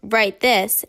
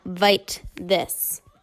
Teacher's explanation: pronunciation of W as V